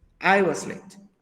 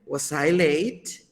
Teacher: Es descendente la entonación, mientras que en la pregunta es ascendente.